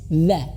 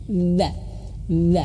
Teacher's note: ujung lidah menyentuh ujung gigi atas dza atau lebih simpelnya lebih sederhananya seperti mau digigit ujung lidahnya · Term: dz dalal